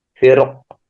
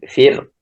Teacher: Jadi ra-nya huruf sukun, sebelumnya kasrah dan sebelumnya adalah huruf isti'la yang juga berharokat kasrah. Maka boleh dibaca tafkhim, firq atau tarqiq, firq.